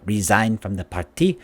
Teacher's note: it goes up and down that's how the malays when they speak english it's how most of them sound